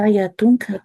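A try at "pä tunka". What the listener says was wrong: Ex- Contracción estoy diciendo. No paya, sino pa nomás.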